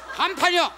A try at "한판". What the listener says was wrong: 지금은 또 간판이라고 그러네. 정확하게 하십시오.